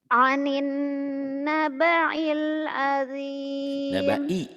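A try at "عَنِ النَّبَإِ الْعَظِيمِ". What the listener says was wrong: nabai jangan nabail ya. Proses pembedaan antara ain, latihan ain dan hamzah. Anin nabai hamzah ya, alif. Ainnya dua ya. Ain ini ain pertama, ini ain kedua. Ini ain membedakan ain. Ya, ini alif ya.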